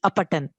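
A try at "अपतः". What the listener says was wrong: It is sakara is given, but it is actually just visarga. No, apataha.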